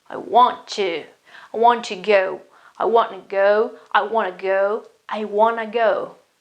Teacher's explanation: the words melted together the t sound was almost eliminated